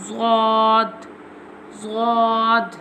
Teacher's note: Zad pronounced from the sides of the tongue touching the roots of the upper molar top back teeth